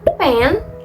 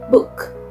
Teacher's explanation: bedanya kalau P itu voiceless, kalau B itu voiced. Contohnya seperti P pada kata pen dan B pada kata book.